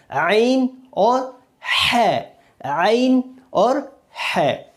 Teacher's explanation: دو حرف یعنی عین اور ح، یہ دونوں بھی گلے کے درمیانی بیچ کے حصے سے ادا ہوتے ہیں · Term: وسط حلق